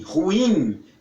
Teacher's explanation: Nós temos que concordar com ele, porque olha, a palavra não tem acento e as pessoas, grande parte das pessoas pronunciam como se ela tivesse acento. Ruim, a força vai toda no i, ruim, e não no u, ruim, porque não tem acento, é ruim.